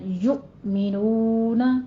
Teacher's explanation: الذین میں بھی نرمی سے پڑھیں گے دال کو، سیٹی کی آواز نہیں آنی چاہیے. یؤمنون، دونوں ہونٹوں کو گول کیجئے اور ساتھ میں حمزہ پہ تھوڑا سا جھٹکا دینا ہے